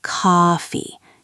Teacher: It has that open O sound. Coffee. You drop your jaw.